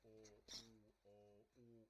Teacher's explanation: I'm just raising the back of my tongue. The lips are staying the same.